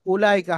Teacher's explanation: কিন্তু এখানে ও সাকিন নেই ওটি লেখা এসছে পড়ায় আসবে না ওয়াওটি বাদ দিয়ে পড়তে হবে উলাইকা হামজার উপরে আপনার হামজার উপরে পেশ আছে